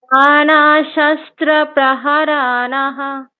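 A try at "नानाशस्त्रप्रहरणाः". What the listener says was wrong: না না, আবার দেখুন, আপনি আবার রতে দিয়ে দিচ্ছেন টাইম। আবার প্রহরণাহ, এটাই বারবার বলুন, প্রহরণাহ প্রহরণাহ। দেখুন, একসাথে বলতে কিন্তু রতে দিয়ে দিচ্ছেন। যে ফ্লোতে প্রহরণাহাটা আলাদা বলছেন, প্রহরণাহা। এবার নানা শাস্ত্র, প্রয়োজনে হালকা একটু মানে থামুন, স্লো করুন।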